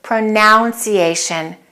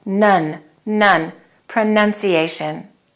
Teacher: in the noun form the vowel sound changes and it's just nun